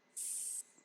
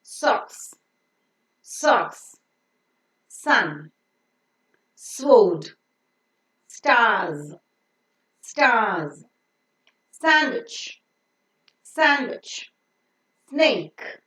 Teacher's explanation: The tip of the tongue goes very, very close to the teeth ridge, not touching it, leaving a small gap so that the air that is coming out from the lungs passes through this with slight audible friction.